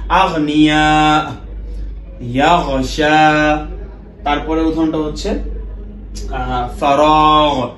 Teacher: এই সব ক্ষেত্রে যখন আমরা গাইন উচ্চারণ করেছি, সব ক্ষেত্রে কিন্তু আমরা বাতাসটাকে পাস করে দিয়েছি